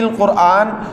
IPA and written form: alqurˈʔaːn (al-Qurʾān)